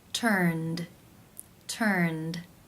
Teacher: How do you pronounce this word? The final sound in the infinitive is the n consonant sound, n, which is voiced. Therefore, it is case 2, where the ed is pronounced as the d sound.